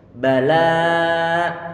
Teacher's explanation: Sehingga di sini ba tanpa ada aliran suara, tanpa ada hembusan angin yang keluar. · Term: huruf ba